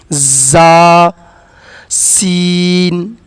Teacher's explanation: یہ حروف صفیریہ ہے تو اس میں تھوڑی سیٹی والی آواز ہونی چاہیے۔